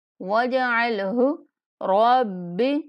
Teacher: واو کو جیم کے ساتھ ملائیں گے اور جیم پر کلکلا کریں گے